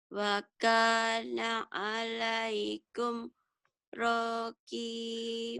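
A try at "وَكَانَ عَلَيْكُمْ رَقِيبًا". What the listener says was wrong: Roknya pendek. Roki, kinya panjang. Wa kana alaikum raqiba. Raqiban digantikan raqiban, raqiban, raqiba.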